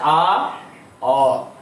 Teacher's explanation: এখন অ কে ডাকলো, অ বলার সময় জিহ্বাটা একটুখানি উপরে ওঠে। আয়ের পরে অ বললে জিহ্বাটা একটুখানি উপরে ওঠে। তো আস্তে করে জিহ্বাটা উপরে উঠলো এবং সাউন্ডটা কিন্তু ভিতরে চলে যাওয়ার চেষ্টা হচ্ছে, আ অ।